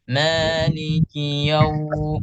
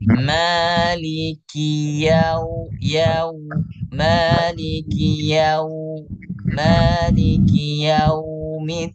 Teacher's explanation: jelaskan dia huruf ya yang berharokat fathah terlebih dahulu baru dimasukkan ke dalam huruf waw yang sukun